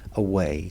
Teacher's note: So away two syllables we stress the second one it's amamic. We don't stress the first syllable. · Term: iambic